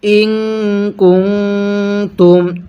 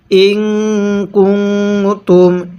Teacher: এই যে নুন সাকিনের পরে ইকফার হরফ, এই জন্য নুন সাকিনগুলো গুনাহ করে পড়তেছি